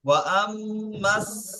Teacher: এখানে আলিফ লামটা বাদ যাবে কারণ সিন হরফে শামসি তাহলে আলিফকে আর লামকে দুটোইকে বাদ দিতে তাহলে ওয়া আম্মাস وأما